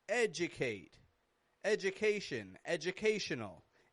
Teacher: no matter how I say this word, educate, education, educational, it's getting the same j kind of reduction.